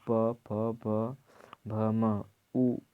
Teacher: इन अक्षरों के उच्चारण में दोनों ओठों का प्रयोग किया जाता है